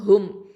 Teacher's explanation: இந்த ஹ அப்படிங்கிறது அக்கசல் ஹல்க்கு நடுத்தொண்டை எழுத்து. மீமில் சுக்கூன் இருக்குது.